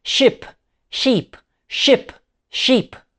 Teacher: it's the difference between a short relaxed vowel e and a long tense vow where the corners of your mouth pull back slightly e. This is like a micro workout for your tongue and lips.